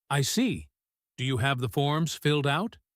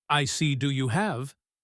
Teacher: There is a clear pause after I see.